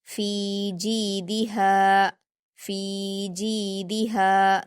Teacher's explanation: फिर जीम पर या मद्दा है, 2 हरकत खींचेंगे, जी। दाल पर हरकत जल्दी पढ़ेंगे और हा पर अलिफ मद्दा है, 2 हरकत खींच कर पढ़ेंगे। फी जीदिहा, फी जीदिहा, यहाँ पर दाल को जल्दी पढ़ना है, बाकी तीनों में हरफे मद्दा है तो खींच कर पढ़ेंगे, फा को भी, जीम को भी और हा को भी।